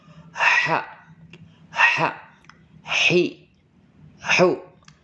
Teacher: ha dibaca dengan wasul halqi yang artinya Tengah tenggorokan